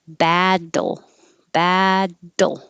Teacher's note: Don't leave too much time between the D and the L.